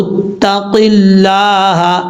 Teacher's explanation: لفظ اللہ سے پہلے زیر ہے قاف کے نیچے تو اس کا مطلب لفظ اللہ بریک پڑھا جائے گا، اس کو پر پڑھنے کی ضرورت نہیں ہے. لفظ اللہ کے اوپر کھڑا زبر ہے، ایک الف کی مقدار لمبا کریں گے، ہا کے اوپر زبر ہے.